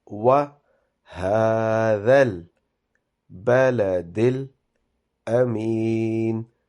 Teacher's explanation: waw at the beginning has to be pronounced softly with round-shaped lips